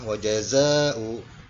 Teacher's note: Mad wajib muttasil. Karena mad menghadapi hamzah, ya, dalam satu kalimat. Kemudian dibaca panjangnya adalah sampai 6 harokat